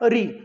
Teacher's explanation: ये ध्वनि आपकी आएगी जो प्लेस आपका री है, री का जो प्लेस स्थान आपका बनेगा वो आपका बनेगा मूर्धा ध्वनि के अंतर्गत